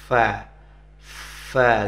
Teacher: Gimana dia? Letaknya ujung gigi seri atas, kemudian ditempel ke bibir bawah. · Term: huruf fa